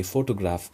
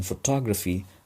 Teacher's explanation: the length of the vowel o is shortened